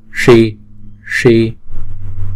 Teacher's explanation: chữ s này uốn cong lưỡi lại và búng ra.